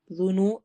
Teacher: ذال کو نرمی سے پڑھنا ہے، نو میں واو مدہ ہوگی